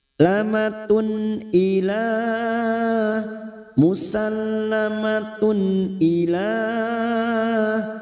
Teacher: tanwin bertemu Hamzah Idhar halq dibaca jelas tanpa mendengung · Mat jaiz munfasil 5 harokat kita panjangkan. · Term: idhar halqi